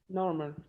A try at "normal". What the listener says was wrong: Don't try to pronounce the R.